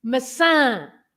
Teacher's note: The tilde on the last A makes the word stressed on that part of the word, the last part.